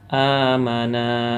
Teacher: maka cara membacanya terang jelas tanpa mendengung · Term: izhar halki